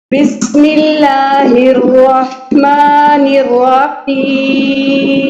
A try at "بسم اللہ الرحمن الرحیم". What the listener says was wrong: دیکھیں با کے بی کو بالکل باریک کر لیجیے. بسم اللہ الرحمن الرحیم.